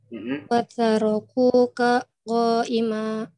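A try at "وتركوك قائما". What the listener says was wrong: Hati-hati, ini qaimanya di kaf itu. Watarokuka qo.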